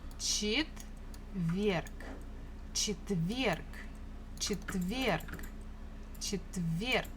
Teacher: Stress falls on this last syllable.